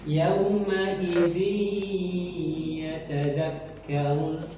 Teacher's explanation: Idgham bi gunnah harus ditempo, didengungkan di dalam hidung.